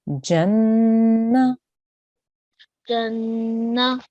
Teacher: We're going to join that to the noon gunna because it's a noon with a shadda on top. And we will make a sustained nasal sound for 2 seconds.